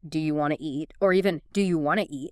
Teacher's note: the T often disappears in want to